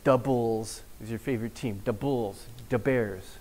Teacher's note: the dental fricatives become a D. So if you're in Chicago, you'll see these stickers on cars and signs that say Da Bulls or Da Bears.